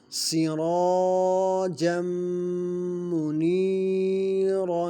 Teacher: سرا را موٹا ہوگا، را پر زبر ہے، اس کے بعد الف مد ہے، را کو لمبا بھی کریں گے۔